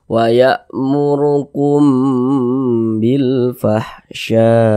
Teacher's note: di bagian kumnya kita tahan, kita panjangkan sejenak. Kita dengungkan. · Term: ikhfa syafawi